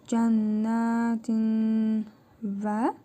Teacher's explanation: İdğ mealqinə qaydasına görə tənvindəki nun hərfini burnumuzda tələffüz edərək bir hərf miqdarı uzadırıq. Vav hərfini isə şəddəli tələffüz edirik.